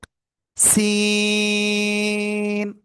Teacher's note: জিহ্বার আগায় সামনে নিচে দুই দাঁতের পেট ও আগায় লাগাবো, লাগিয়ে সিম্পল এরকম একটু আওয়াজ হবে, চার আলিফ টান হবে।